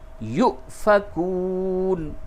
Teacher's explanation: یہ واو کے اوپر حمزہ ہے، یہ واو مدہ نہیں بلکہ یہ جھٹکے کے ساتھ اس واو کو پڑھیں گے